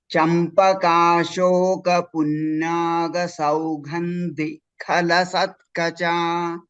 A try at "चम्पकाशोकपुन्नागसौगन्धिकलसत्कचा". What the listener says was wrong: Now, ga is a alpa prana. Generally, what happens is when there is an alpa prana, mahaprana, we will interchange. Saugandhikalasatkacha.